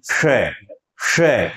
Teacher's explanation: इस श को बोलने के लिए जीभ को आप मूर्धा के पास ले जाएं, यानी ट वर्ग जहां से बोलते हैं लगभग वहां जीभ को ले जाएं, उतना स्पर्श नहीं करवाना और श का उच्चारण करना है, तब आपकी ध्वनि निकलेगी श, श।